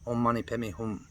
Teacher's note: Hum, you don't have to close your lips. And this just is because some of the people, some of the Westerners who want to get this stuff written out, heard a nasally sound.